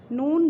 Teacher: زبان کا سرا اور اوپر کے مسوڑوں سے مل کر ادا ہوتا ہے